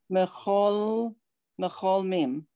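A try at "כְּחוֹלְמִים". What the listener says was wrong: It's a no. Kaf. Kechol mim. Good.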